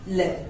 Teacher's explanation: पार्श्विक का अर्थ होता है बगल में, यानी कि जिस वर्ण का उच्चारण करते समय वायु जिह्वा के दोनों तरफ से निकले यानी बगल से निकले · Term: पार्श्विक व्यंजन